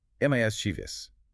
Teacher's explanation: the stress firmly on the first syllable